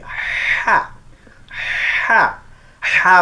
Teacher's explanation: অক্ষরটা কণ্ঠনালী মাঝখান থেকে সুসু শব্দ হবে। হা অক্ষরটা সমস্যা একটু, আমাদের দেশে অধিকাংশ মানুষের এই অক্ষর উচ্চারণ হয় না।